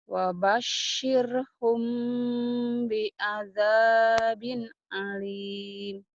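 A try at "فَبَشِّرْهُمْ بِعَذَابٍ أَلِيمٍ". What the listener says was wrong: fa bukan wa ya, fa.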